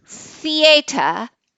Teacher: the tip comes very close to the upper teeth when you're making it voiceless